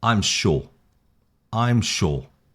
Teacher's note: we have the falling intonation, which says more about confidence or a statement. You're making a statement.